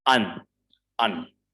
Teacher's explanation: So R again, it's before a consonant. So we won't pronounce it.